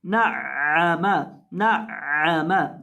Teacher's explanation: ये जो आइन है इसको आपने हलक के बीच से अदा करना है